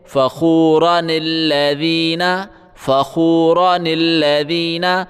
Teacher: اس کا قاعدہ یہ ہے، اگر ہم اسی لفظ سے پڑھنا شروع کریں تو اس الف کو پڑھیں گے، جیسے الذین الذین، لیکن اگر اس سے پہلے کوئی لفظ موجود ہو اور ہم دونوں لفظوں کو ملا کر پڑھ رہے ہوں تو یہ الف خاموش ہو جاتا ہے، جیسے فخوراً الذین، فخوراً الذین، بیچ میں الف ہے، یہ الف خاموش ہو گیا، یعنی اس کی آواز نہیں پڑی جاتی۔ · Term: حمزہ وصل